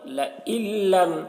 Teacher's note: ایک ساتھ ہو تو ساکن والے حرف کو نہیں پڑھتے ہیں، تو یہاں پر نون کو نہیں پڑھا جائے گا، حمزہ کو لام سے ملا کر پڑھیں گے